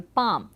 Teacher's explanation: The second major change could be described thus: it included the lengthening of long a where the consonant L standing immediately before a lip consonant was at one time pronounced but then became silent